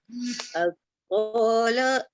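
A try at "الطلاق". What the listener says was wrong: To tak panjang. To tak panjang. At-tala.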